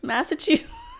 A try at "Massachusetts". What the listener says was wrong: Why do you put a twang on it?